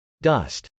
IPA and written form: dˈʌst (dust)